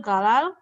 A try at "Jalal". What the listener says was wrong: Actually, the pronunciation is not Galal, but Jalal. Jalal.